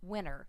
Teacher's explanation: they leave the T off of winter, and it sounds like they're saying winter.